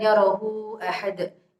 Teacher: itu ada hak dhamir mat yang bertemu dengan alif, itu disebut mad silah tawilah yang panjangnya 3 alif atau 6 harokat.